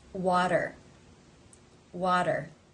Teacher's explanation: this t comes between two vowel sounds therefore it is pronounced as the flap tap t or in other words the D sound